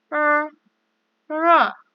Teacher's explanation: 你们要注意, kalian harus memperhatikan cara membunyikan R dalam bahasa Mandarin. Kalau R dalam bahasa Indonesia kita ada getaran R, tapi dalam bahasa Mandarin tidak ada. R. Karena jangan lupa ujung lidah diletakkan di atas langit-langit.